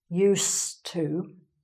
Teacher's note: When you say I used to, so again, we've got the s sound, not z, used to.